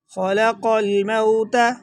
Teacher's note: خا کو موٹا پڑھیں گے، قاف کو بھی موٹا پڑھا جائے گا، اور قاف اور لام کو دونوں کو ملائیں گے، بیچ میں سے الف کو حذف کر دیں گے۔